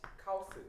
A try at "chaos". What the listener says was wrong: 원래 영어 단어가 chaos예요. chaos. 그래서 이게 A 이렇게 발음하는 거고 얘가 R예요. chaos. 이 발음 키읔 발음이고. 그래서 chaos. 근데 이거를 그냥 일본식 혹은 콩글리시로 읽으면 카오스 이렇게 발음하는데 카오스 아니고 영어 발음으로는 chaos입니다.